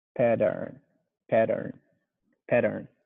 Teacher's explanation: you got to put all that emphasis on the first syllable.